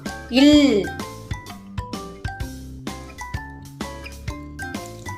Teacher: போச்சு இல் இது என்ன எழுத்து இல் இந்த எழுத்தை எப்படி உச்சரிக்கணும் அப்படின்னா நம்மளுடைய நுனி நாக்கு மேல அன்னத்தை நல்லா வருற மாதிரி சொல்லணும் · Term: மெய்யெழுத்து இல்